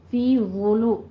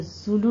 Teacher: وولو نرمی کے ساتھ ہوگا اور پر پڑھا جائے گا اور ہونٹوں کو گول کیجئے، ضمہ ہے لام کے اوپر بھی اور زوا کے اوپر بھی.